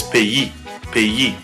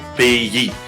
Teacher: So again, the stress is on that final syllable, pays. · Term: final stress